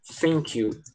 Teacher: é muito comum algumas pessoas, no lugar de falar o TH, elas falarem com o som de F